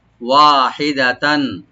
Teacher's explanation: ওয়া ওপেন রাখবেন এবং একালে টানবেন, আর দাল ওপেন থাকবে